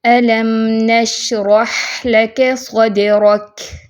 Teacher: اور کاف پہ اس کی صفت جو ہے کمزور سی آواز لازمی ہونی چاہیے